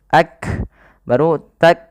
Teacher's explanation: ada nafas yang dikeluarkan ketika melafalkannya, yang dimana kaf juga punya sifat namanya hamas